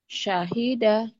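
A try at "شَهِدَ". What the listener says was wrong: Syahida enggak ada yang panjang.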